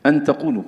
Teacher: لابد من مراعاة أن النون تخفى عند التاء ويكون صوتها أقرب إلى الإدغام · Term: إخفاء النون عند التاء